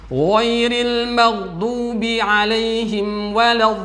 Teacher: Hati-hati, jangan sampai tertukar dengan saudaranya, yaitu dha yang ada tongkatnya, yang mana dha makhrajnya adalah seperti dzal, menempelnya ujung lidah ke gigi seri bagian depan